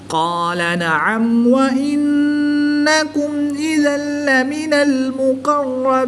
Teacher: نون مشدد میں ہمیشہ غنہ ہوتا ہے تو یہاں پر ہم غنہ آنی کر کے پڑھیں گے. میم ساکن کے بعد حرف با اور میم کے علاوہ حرف حمزہ ہے تو یہاں پر اظہار شفوی ہوگا، یعنی غنہ نہیں کریں گے بلکہ میم ساکن کو ظاہر کر کے پڑھیں گے.